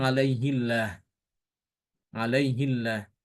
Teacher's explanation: Karena sebelum lafaz jalalah itu kasroh, maka lafaz jalalahnya dibaca dengan tipis.